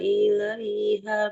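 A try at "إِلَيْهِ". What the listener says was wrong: sebentar, bukan ilaiha ya. Ini harokat kasroh, bunyinya hi.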